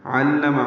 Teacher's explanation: علم عین وسط حلق سے ادا کریں گے، لام سے ملائیں گے، عین لام میم جلدی پڑھیں گے.